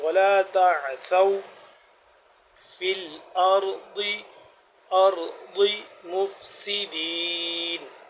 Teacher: ولا تعثوا ثا واو زبر ثو نرمی سے جیسے ذال ادا ہوتا ہے ویسے ہی ثا زبان کو باہر کی جانب نکالیں گے دانتوں کے درمیان سے تو اس طرح سے ثا بھی ادا ہوتا ہے.